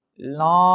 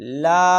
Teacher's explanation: ناک میں آواز غلط ہے، منہ سے لا، یہ درست آواز ہے